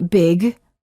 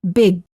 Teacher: Don't say big, say big. hold the final G sound by making sure that your tongue remains up in the back of the mouth when you're done saying the word. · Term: Holding final stops